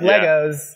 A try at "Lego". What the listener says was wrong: Everybody loves it's actually Lego. It's not Legos. Yeah, it's definitely not Legos.